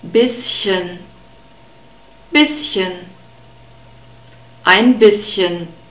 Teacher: We have a short E sound in bisschen and a sharp S, and we have the CH, the soft CH again in this word, like in the word ich too.